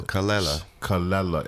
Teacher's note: Emphasis on the second syllable.